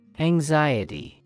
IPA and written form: æŋˈzaɪəti (anxiety)